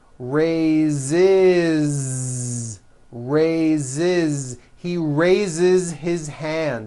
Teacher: So we say I raise with a voiced Z ending, and he raises.